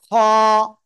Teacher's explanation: গলার ওই কি বলে শেষ ভাগ থেকে আমরা উচ্চারণ করব এবং মোটা আওয়াজে এক আলিফ টান হবে